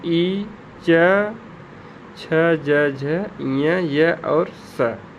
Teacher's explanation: ये सब का उच्चारण स्थान हम तालु से करते हैं।